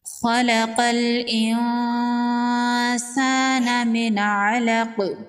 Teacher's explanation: قاف حروف مستعلیہ میں سے ہے، قاف کو پر پڑھیں گے۔ نون ساکن کے بعد حروف اخفا میں سے سین ہے، یہاں پر اخفا ہوگا، نون کی آواز کو ناک میں چھپائیں گے۔ الف مدہ ہے، ایک الف کے برابر کھینچ کے پڑھیں گے۔